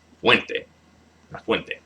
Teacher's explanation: The stress is on the second to last syllable.